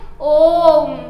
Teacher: जैसे इसका उच्चारण करते हैं ओम, तो इसमें 3 गुना ज़्यादा समय लगता है, अर्थात 3 मात्रा का समय लगता है, इसलिए इन्हें प्लुत स्वर कहा जाता है।